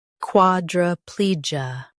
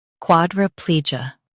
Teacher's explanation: quad, ra, plee, ja, quadriplegia quad, ra, plee, ja, quadriplegia In US, stress plee. In UK, stress quad. · In US, stress pli. In UK, stress quad.